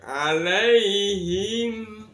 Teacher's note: Mimnya dibaca jelas karena di bibir, syafawi itu bibir, jelas di bibir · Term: idhar syafawi